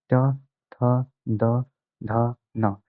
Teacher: your tongue touches the upper part of your jaw, that is the upper part of the palate, and is known as retroflex.